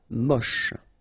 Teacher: Don't insist on the final E, then you get the last sound is sh.